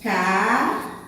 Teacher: Na palavra café, a sílaba tônica foi a última. Então, por isso, ela é uma palavra oxítona.